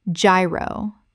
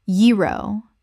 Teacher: The G makes a Y sound. This is a Greek word that kept its original pronunciation.